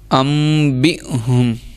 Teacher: حمزہ پہ جزم آ رہی تھی اس لیے ہم نے جھٹکا دیا ہے